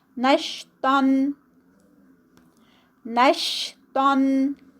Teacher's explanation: شین اس میں آواز جو ہے وہ پھیلتی ہے